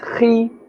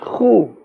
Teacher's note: Kha and ghain, both these letters are from the top part of the throat, but you can hear the difference.